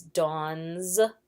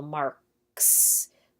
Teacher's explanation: names when doing possessives it's Dawn's but it's also marks because dawn ends with a voiced letter whereas mark ends with a voiceless